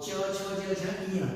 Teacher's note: हमारा जो जीवा होता है वो तालु में सट के निकलता है